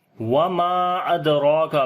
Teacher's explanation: دال کے اوپر قلقلہ کریں گے، کمزور قلقلہ ہوگا ، را کو موٹا پڑھیں گے، اس کے اوپر کھڑی زبر